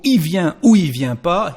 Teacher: even when we speak actually, il becomes I everywhere, consonant or vowel